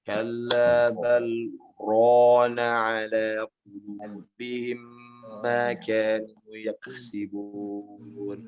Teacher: Ro ini jangan dibaca ra Pak ya. Ini makhraj sudah benar ya, akan tetapi dia mesti tafkim namanya. Ro benar dibaca ro, ada o-nya.